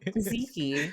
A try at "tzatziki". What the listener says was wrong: You missed like a whole syllable. TZA. Tzatziki. Tzatziki. Tzatziki. Tzatziki.